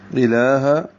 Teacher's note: لام کو 2 حرکات لمبا کریں گے، کھڑا زبر ہے، قائم مقام الف مدہ ہے، ہا عکس سے حلق سے، اور یہ دونوں لام باریک ہیں، بلکہ اللہ کا لام بھی باریک ہی ہے.